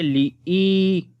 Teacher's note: ای کی آواز کے ساتھ لمبا کریں گے، یا مدہ ہے